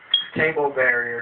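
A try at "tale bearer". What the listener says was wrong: There's no B there.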